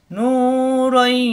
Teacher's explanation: তানবিনের পরে আসছে ইয়া, এই ইয়া তাজদিদ ধরে গুন্না করে মিলিয়ে পড়তে হবে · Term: ইদগামে বা গুন্না